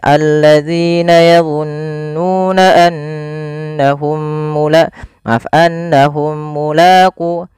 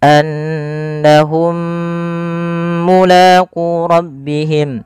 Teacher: Idgham mimi ini cara membacanya mim yang pertama masukkan yang mim kedua, kemudian ditahan. Maka annahum mulaqu ditahan dulu.